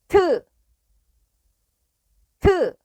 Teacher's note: This sound is made by sticking the tip of the tongue to the back of the upper front teeth, and then detaching it, but it makes a much stronger wind sound than 드. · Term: 티읕